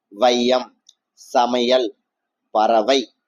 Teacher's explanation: அந்த ஐ வந்து சொல்லின் முதலில் வரும்போது ஒன்றை மாத்திரையும், இடையில இறுதியில வரும்போது ஒரு மாத்திரைகளும் · முதல், இடை, இறுதி ஆகிய இடங்களில் வரும்போது தனக்குரிய 2 மாத்திரையிலிருந்து குறைந்து ஒழிக்கிறது. இவ்வாறு குறைந்து ஒழிப்பது ஐகார குறுக்கம்.